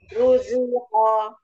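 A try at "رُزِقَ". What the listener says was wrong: Roknya tebal. Ruziqo. Qafnya tebalkan lagi. Ruziqo.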